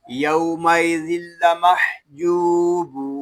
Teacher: یہاں جیم اور با کو ہم ایک الف تک کھینچ کر پڑھیں گے کیونکہ یہاں پہ واو مدہ ہو رہا ہے